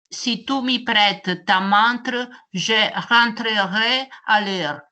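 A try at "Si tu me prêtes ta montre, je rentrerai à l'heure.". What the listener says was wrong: C'est pas si, à part que c'est tout mis, c'est vraiment l'accent italien poussé à l'extrême.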